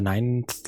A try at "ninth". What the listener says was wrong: There's no E in ninth.